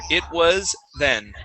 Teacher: a z sound like was and then a th right afterwards